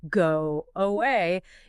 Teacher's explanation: It becomes go away using a W to bridge the gap.